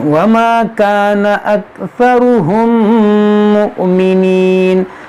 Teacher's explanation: یہاں پر غنہ ہوگا، میم ساکن کے بعد میم ہے، ادغام شفوی ہوگا